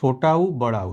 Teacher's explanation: छोटा उ और बड़ा उ यह दोनों ही ओट से उच्चारित होते हैं